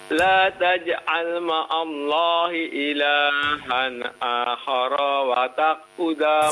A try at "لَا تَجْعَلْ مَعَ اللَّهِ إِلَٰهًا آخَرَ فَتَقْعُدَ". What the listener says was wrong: Fa bukan wa ya, fa ya. Ulang kembali.